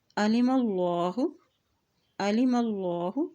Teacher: یہاں دیکھیں اللہ کے نام سے پہلے زبر ہے تو اللہ کا نام موٹا ادا کیا جائے گا